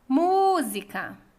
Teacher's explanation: A sílaba tônica é mu e é a antepenúltima. Então, é uma palavra proparoxítona.